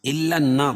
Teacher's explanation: فی بطونہم الہم، نہم الا النار کر کے نہیں، غنہ نہیں کریں گے اس میں، ٹھیک ہے، اظہار کریں گے. الا النار، نون مشدد ہے، غنہ ہوگا